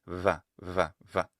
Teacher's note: But when it's between vowels, it will become a voiced bilabial approximate, that is a v sound, v. And also sometimes it can be realized more like a bilabial fricative